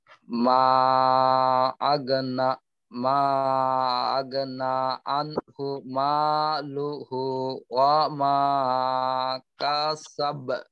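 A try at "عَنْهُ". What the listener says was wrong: তো এখানে টানগুলা ঠিক ছিল, এলোমেলো আর কি, যেখানে টান নেই ওইখানে টান হয় নাই তেমন একটা। তো বিশেষ করে আইনের উচ্চারণ গুলো আর একটু খেয়াল করবে। আ, রি, রু, আনহু, আনহু।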